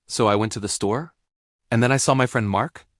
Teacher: This is where you end your statements with a rising intonation, making them sound like questions. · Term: Valley Girl Upspeak